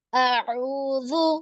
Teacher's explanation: ذال بالکل نرم کیونکہ حروف لثاویہ میں سے ہے